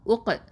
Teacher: காஃப் சுக்கூனுக்கு கல்கலத்துல் குப்ரா சட்டம் கொடுக்கணும். லைட்டாக அசைச்சு ஓதணும்